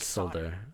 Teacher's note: you're putting a very light L right before that D and I can hear it but but I can barely hear